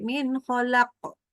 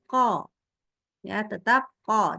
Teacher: Jadi kayak ketelen suaranya. Harusnya qaf itu tetap di pangkal lidah. Jadi tetap di sini di area lidah, pangkal lidahnya, disitulah pantulannya.